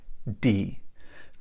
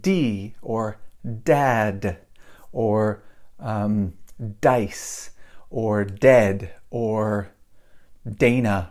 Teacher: when I say D in English, my tongue is pointed up and I'm touching the top of my mouth